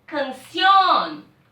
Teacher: Porque é uma palavra aguda, porque a última sílaba é mais forte.